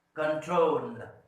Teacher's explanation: Now you see that this last syllable is stressed.